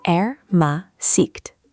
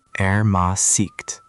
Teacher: The emphasis is on the second syllable.